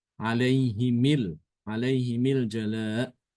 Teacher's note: Ada yang baca nanti dengan mengkasrkan mimnya ya.